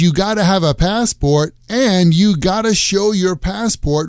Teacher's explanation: in spoken American English we tend to use the pronunciation gada when we talk about necessity